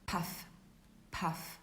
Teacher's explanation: in english that depends on where it is in the word if it's at the beginning we say it's an aspirated sound meaning there is a puff of air